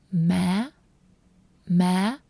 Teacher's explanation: So it's like ma, but higher tone at the end.